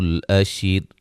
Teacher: الف مدہ ہے، را کو وقفاً باریک پڑا جائے گا